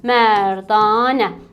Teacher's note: Burda ancaq və ancaq anə şəkilçisində uzanmanın şahidi ola bilirik.